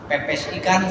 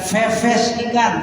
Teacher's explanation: yang namanya Fa itu ada angin keluar